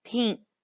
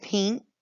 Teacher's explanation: So you kind of hear that ng, like that N kind of stretches out like the ng in pink.